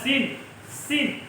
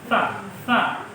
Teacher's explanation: Kalau sin jelas sin, sin. Tapi kalau sa itu tipis lidahnya, ujung lidah menyentuh gigi.